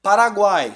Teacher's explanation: o encontro vocálico de três sons vocálicos na mesma sílaba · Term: tritongo